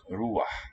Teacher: in spoken Arabic it is clear that a transitional ah is frequently heard in words like ruah